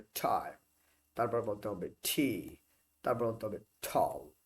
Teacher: টি এর উচ্চারণটা উচ্চারণ করার সময় একটা টি এইচ একটা হ যুক্ত থাকবে এবং ঠ এর মতো উচ্চারণ হবে। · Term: অ্যাসপিরেটেড